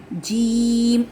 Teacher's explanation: وسط زبان اور بالمقابل اوپر کا تالو